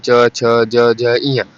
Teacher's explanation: च, छ, ज, झ, ई तालु से इसका उच्चारण होता है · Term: च वर्ग